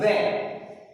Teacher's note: इसका उच्चारण स्थान है दंतोष्ठ, दांत और होठ। वे, वे यानी वे हमारी जीभ दांतों के पास में आई और दोनों होठ मिल गए, इसलिए इनका उच्चारण स्थान है दंतोष्ठ।